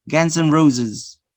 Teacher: So you use here the weak form. So you are omitting or reducing the vowel.